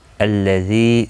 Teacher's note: ذی یا مدہ ہے، 1 الف کی مقدار کے برابر کھینچ کر پڑھیں گے